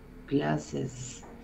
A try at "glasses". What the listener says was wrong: No, escuché una. Tiene que vibrar el último.